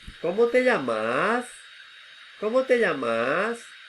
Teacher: One is rising intonation, the other are going down.